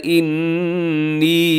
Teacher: انی نون مشدد بھی ہے اور ساتھ لمبا بھی کرنا ہے